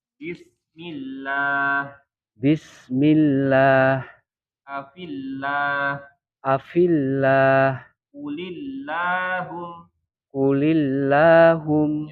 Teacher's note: Kemudian dibaca tarkib ketika lafal Allahnya atau lafzul jalalahnya didahului harokat kasroh.